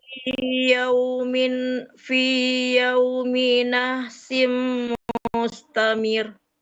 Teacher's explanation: Jangan mir, nggak boleh panjang mirnya.